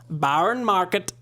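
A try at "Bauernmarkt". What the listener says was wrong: No, there's no e. No, it's just marked.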